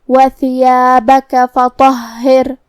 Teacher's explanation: کلمت فطہر میں یہاں حرف الطو ہے. طا حروف التفخیم میں سے ہے تو ہم یہ حرف کو بھاری آواز میں منہ پھلا کے پڑھیں گے. پھر حرف الہا پہ تشدید ہے تو 2 حرف کے برابر ہمیں ہا کو پڑھنا ہے.